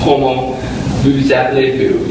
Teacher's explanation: in Como, you stop pronouncing the word essentially after the last vowel. So it kind of sounds like C-O-M-O.